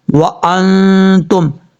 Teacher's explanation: اب اس کے بعد ہے وانتم، واو زبر وا، حمزہ نون زبر ان، تا میم پیش تم، وانتم، نون ساکن کے بعد تا آ رہا ہے، حروف اخفا میں سے نون ساکن کا اخفا ہوگا ایک الف کی مقدار